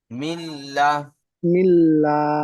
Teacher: নুন সাকিনকে লামের সঙ্গে মিলিয়ে বিনা গুন্নায় জাহির করে পড়তে হয়। বিনা গুণায় জাহির করে পড়তে হয়। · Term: ঈদগামে তাম